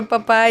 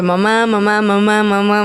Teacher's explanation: Pues sí es que las dos son bilabiales